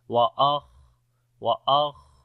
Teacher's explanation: تو سانس جاری ہوگا خا کے اندر۔ وأخرجت الأرض، یہاں پر بھی را اور دعا دونوں کو موٹا پڑھیں گے۔